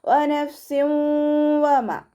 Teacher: ഇവിടെ ഫ ലൈറ്റ് ആക്കിയിട്ട് ഉച്ചരിക്കുക. പിന്നെ ഫ സുക്കൂനാണല്ലോ, അപ്പോൾ ഹാഫ് സുക്കൂന് കൊടുത്തിട്ട് ഉച്ചരിക്കുക.